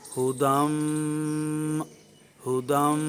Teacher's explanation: ہا کی پیش کو معروف پڑھیں گے اور میم جو مشدد ہے اس پر غنہ کریں گے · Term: غنہ زمانی مظہرہ